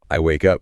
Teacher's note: Energy generally translates to a higher pitch on the stressed anchor. The anchor here is the direction up. So, you raise the musical note of your voice on that specific word.